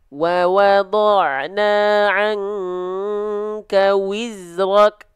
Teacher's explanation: huruf waw itu ya dilafalkan harus maju. Ya, jangan hanya sekedar wa enggak, tapi wa.